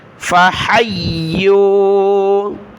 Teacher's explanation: ہا کو یا کے ساتھ ملائے، یا کو واو کے ساتھ، یا کو سخت کیا تشدید کی وجہ سے